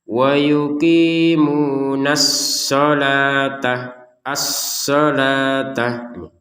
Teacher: As-so kan ditekan shodnya tanpa dengungan. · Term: tasydid